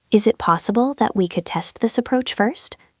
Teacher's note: Listen to the rising intonation at the end.